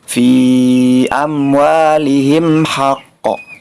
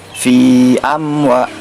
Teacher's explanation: Nah, cara membacanya itu harus jelas atau tanpa dengung. Fi amwa. Nah, di sini tidak ada dengung. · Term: izhar syafawi